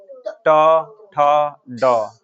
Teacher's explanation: फिर चलते हैं मूर्धा, मूर्धा मतलब जीभ को मोड़ करके बोला जाता है